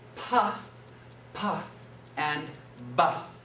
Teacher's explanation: They're actually the same manner of articulation, bilabial, two lips. Pa, ba. The only thing that makes those two sounds different is in the vibration.